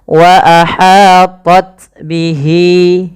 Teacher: panjangkan lafal hi 2 harakat karena ia mad silah qasirah, ditandai dengan ha dhamir.